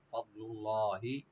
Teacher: না ফা, ফাটাকে ওপেন রেখে দোয়াটাকে রাইট দিবেন একটু ডিপ করে, ফাদলুল্লাহ লফজ জালাল এখানে আমরা ডিপ করে পড়ব